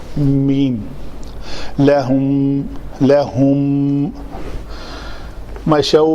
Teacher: میم کا مخرج کیا ہے؟ ہونٹوں کے دونوں خشک حصے جو آپس میں ملیں